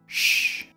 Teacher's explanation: El sonido normalmente viene escrito con la S, H. Sh, come s, emite un sonido sordo. La manera de producirlos es casi igual, solo que para pronunciar el sonido sh se debe poner la lengua más para atrás en la boca.